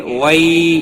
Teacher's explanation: وئی یالین ہے، تھوڑا نرمی کے ساتھ کھینچ کر ادا کریں گے۔